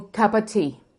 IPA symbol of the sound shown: ə